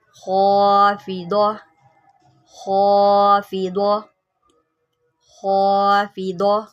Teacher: خا کو موٹا کریں، حروف مستعلیہ میں سے ہے